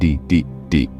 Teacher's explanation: when you say d it's voiced meaning your vocal cords vibrate try it put your hand on your throat and say d